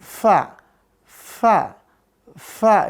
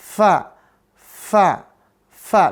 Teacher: Ujung gigi seri atas dengan bibir bawah bagian dalam